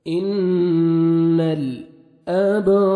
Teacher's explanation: با حروف قلقلہ میں سے ہے، ڈبل ساؤنڈ آئے گا۔